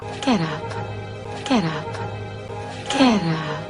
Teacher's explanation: 한 단어처럼 뭉쳐버립니다. 그래서 dada 리듬이고요.